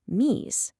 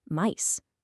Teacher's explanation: that long e sound climbed up and became the i sound we say today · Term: great vowel shift, Great Vowel Shift